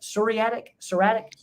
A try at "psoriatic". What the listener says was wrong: Yeah, the P is silent. Psoriatic arthritis.